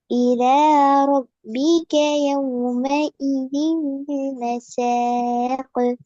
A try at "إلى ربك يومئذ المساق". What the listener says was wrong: எல்லாம் நீங்க 2 செகண்ட் நீட்டிங்க அப்படியா? இப்ப இது 1 செகண்ட், அதுல 1 செகண்ட் நீட்டு அப்படியா? பிசாக்கு மெசாக்கு அப்படியா? 2 செகண்ட்.